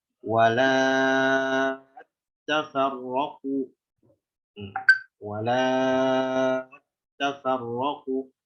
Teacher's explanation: Enggak dibaca walat tafarraqu, nggak dihilangkan alif mad.